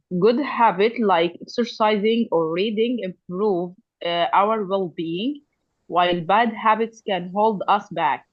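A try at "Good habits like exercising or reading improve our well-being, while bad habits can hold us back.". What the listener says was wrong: Good habits, like good habits. I didn't hear the S sound on habits. Good habits, like exercising or reading, improve our well-being. And the emphasis on well-being, while bad habits can hold us back.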